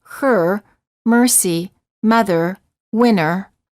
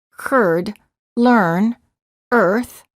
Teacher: the lips are slightly rounded, the tongue is tense and at a mid-level position, and the tip of the tongue is curled up and pulled back.